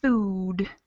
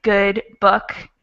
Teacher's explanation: the first one is kind of a longer ooh sound instead the other ones are shorter